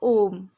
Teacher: जब हम ओम कहते हैं तो ओम कहने के बाद क्या होता है कि वो ज़्यादा टाइम तक गूंजता रहता है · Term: प्लुप्त स्वर